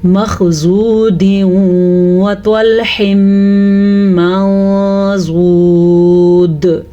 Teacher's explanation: خا بھی پر پڑھا جائے گا اور زواد بھی پر پڑھا جائے گا